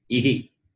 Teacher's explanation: E with the Visarga, it is Ihi, not Iha. Visarga doesn't have separate sound.